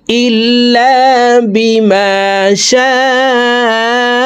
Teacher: এই শিনকে চার লিপ টেনে পড়তে হবে